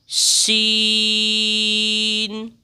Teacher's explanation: जबान का जो बीच का हिस्सा है इसको हम जरा ऊपर लगा के फिर पढ़ेंगे